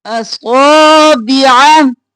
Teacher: صاد موٹا الف کے برابر کھینچتے ہوئے